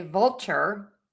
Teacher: your tongue gets kind of close for that L but doesn't touch the whole way. That's a dark L.